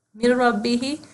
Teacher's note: یہاں پہ ہم نے ہا کو لمبا کرنا ہے, 2 کاؤنٹس لمبا کرنا ہے. یہ 2 انگلیاں 2 کاؤنٹس کو دکھانے کے لیے ہیں.